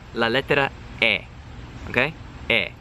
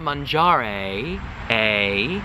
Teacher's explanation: that nice, tight E. E in Italian is tight